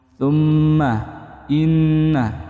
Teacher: mim tahdid atau nun tahdid dipanjangkan dan didengungkan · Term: ghunah